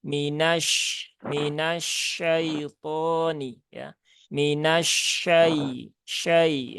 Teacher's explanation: sifat-sifat dari huruf syin itu tertunaikan salah satunya adalah sifat tafasi